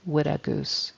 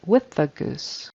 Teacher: with a TH on the end of with. Tongue comes between the teeth. It's a soft TH, with.